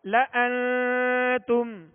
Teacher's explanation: نون ساکن کے بعد تا ہے لہذا یہاں اخفاء ہوگا.